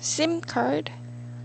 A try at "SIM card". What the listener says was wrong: Because you tend to say it a while ago with an SH sound.